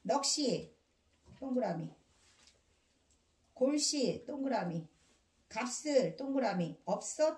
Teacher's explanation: 뒤에 것만 뒤 음절의 첫 소리로 옮겨서 연음됩니다